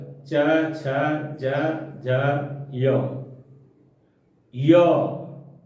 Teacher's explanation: ये सभी वर्ण तालु, मुंह में स्थित जो तालु अवयव है वहीं से ये उच्चारित होते हैं।